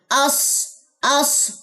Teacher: स्वाद को मोटा कीजिए, स्वाद खाली है, पीछे जबर आ रहा है तो जबर स्वाद को सपोर्ट करेगा